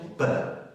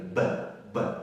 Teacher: ikkita labi bir-biriga tegyapti. B to'siq uchrayapti.